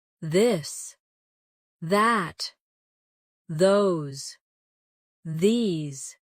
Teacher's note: your tongue touch your teeth lightly, but use your voice.